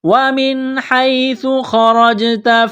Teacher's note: نون ساکن کے بعد حا ہے، حروف حلقی ہے، تو نون ساکن پر غنہ نہیں کریں گے. خا اور را کو موٹا کرنا ہے، را کو زبر کی وجہ سے موٹا کریں گے.